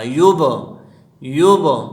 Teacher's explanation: یب میں قلقلہ ہے، قلقلہ کسے کہتے ہیں؟ آواز میں جنبش پیدا کرنا